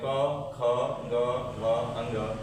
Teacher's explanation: क वर्ग किसे बोलते हैं हम लोग? कंठ से।